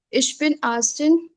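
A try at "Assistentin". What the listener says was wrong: एस्टिन बोलना है, आस्टिन नहीं है, एस्टिन।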